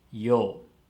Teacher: But when we say this word, we pronounce the 2 letters, yo. It becomes a long vowel, yo. But this long vowel has 2 moras.